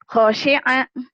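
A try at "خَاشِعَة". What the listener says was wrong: O-nya panjang. Kho ya, bukan go. Kho. Khosyi'a.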